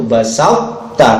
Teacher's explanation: Bacanya seperti itu, basata, tidak basata, enggak begitu, tapi basata. Kolkolahnya hilang, isti'la dan idbaqnya tetap ada. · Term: idgham mutajannisain